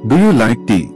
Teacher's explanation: Voice goes up at the end. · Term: intonation